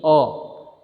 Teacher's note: न तो आ है और न ही ओ है, दोनों के बीच में इसका उच्चारण होता है। न ही आ इसको कहते हैं और न ही ओ इसको कहते हैं, दोनों के बीच में औ, इस तरह से इसका उच्चारण करते हैं। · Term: अर्ध विवृत स्वर